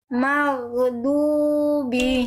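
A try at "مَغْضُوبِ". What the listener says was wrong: Yang ini lebih bagus. Yang ini lebih bagus.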